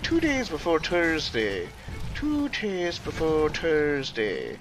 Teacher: You point the tip of your tongue down, and you don't say th right.